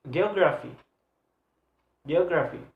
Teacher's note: the stress is placed on the third syllable to the last one